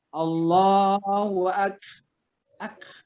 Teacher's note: Ada bunyinya, ada hembusan napas karena kaf itu termasuk huruf mahmus. Baik waktu dia sukun, kalau dia sukun kita jelas pada hembusan napas kita ada k-nya, tapi jangan ke, ya, jangan ke.